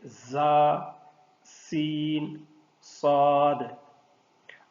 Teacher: یعنی ان 3 حروف میں سیٹی کی آواز نکلتی ہے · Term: حروف صفیریہ